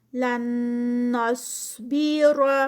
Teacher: لن یہاں پر نون ساکنہ اور نون ساکنہ کے بعد پھر ایک اور نون ہے، ادغام ہوگا اور ادغام ودون نہ ہوگا، نون کا ادغام ودون نہ ہوتا ہے۔